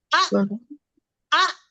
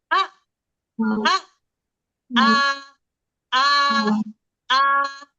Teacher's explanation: आ शरीबा practice करें, आप लोग, आप काम करते हुए भी आ आ आ, ये क्या हो रहा है, आ कर रही हूँ, मेरा वोकल कॉर्ड बंद होकर खुल रहा है। आ आ, झटके से रोक रही हूँ तो मेरा वोकल कॉर्ड बंद ही हो जाएगा। आ आ आ आ आ, समझे।